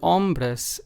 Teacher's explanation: the last word ombres is same thing as the first two since there's only two syllables in this we stress the first syllable